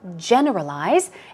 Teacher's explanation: Stress goes on the first syllable, generalize